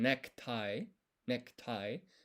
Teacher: between a K and a T, there's no vowel sound.